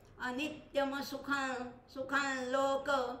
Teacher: इथे कसा करायचा आहे अनित्यम सुखल सुखल अनुस्वाराचा ल करायचा आहे आणि तो ल सुद्धा साधा नाही तर अनुनासिक ल